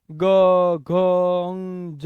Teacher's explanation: ફેફસામાંથી જે હવા બહાર આવે એ નાદ તંત્રીને કંપાવીને પસાર થાય જ્યારે કંપે ત્યારે એકદમ સોફ્ટ વોઈસ નીકળે એને ઘોષ વ્યંજન કહેવાય · જ્યારે કંપે ત્યારે એકદમ સોફ્ટ વોઇસ નીકળે, એને ઘોષ વ્યંજન કહેવાય અથવા તો મૃદુ વ્યંજન કહેવાય.